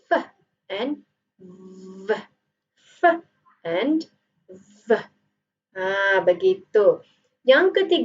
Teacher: labia refers to your lip dental refers to your teeth so you are using your upper teeth and lower lips in order for you to produce the sound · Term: labio and dental